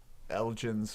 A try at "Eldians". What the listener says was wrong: There's no G in